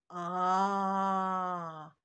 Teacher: аузымызды кең ашып, а деген кезде мына екі жағымыз екі жаққа қарай ашылғанын байқадыңыздар